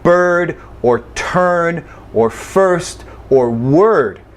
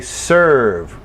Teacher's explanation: Almost any vowel can be a placeholder, where there's the vowel, but there's no sound for that vowel. The sound is the R acting as a vowel.